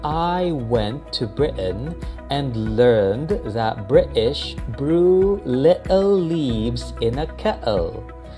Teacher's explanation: instead of pronouncing the T's, let's omit them and say, I went to Britain and learned that British brew little leaves in a kettle.